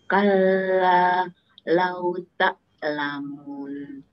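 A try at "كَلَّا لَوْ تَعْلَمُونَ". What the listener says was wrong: Ainya kurang dalam sepertinya. Ta. Oh, kurang. Ta. Itu nyangkut di depan. Ta. Ta. Ta.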